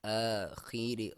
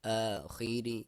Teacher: خا کو موٹا را کو باریک